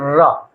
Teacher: रा का उच्चारण करेंगे तो इसकी मतलब जिह्वा हमारी क्या है, अंदर की ओर मुड़ रही है, इसीलिए इसको क्या कहा जाता है, लुंठित कहा जाता है। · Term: लुंठित वर्ण